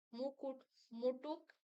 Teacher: উচ্চারণে ভুলে ধ্বনির স্থান অদল বদল হয়ে যাওয়াকে ধ্বনি বিপর্যয় বলা চলে